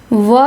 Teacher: व का उच्चारण स्थान दंतोष्ठ है।